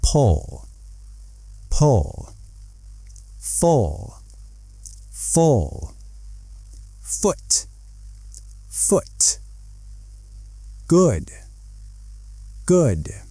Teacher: To make this sound, your lips are a little bit rounded, but they are relaxed. Your tongue is also relaxed. It's a short, soft sound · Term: short uh sound, short sound